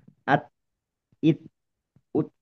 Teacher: Jadi dengan huruf T itu sendiri itu sebetulnya kita tuh merasa tertahan, nggak bisa untuk mengeluarkan vokal apapun. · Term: sifat syiddah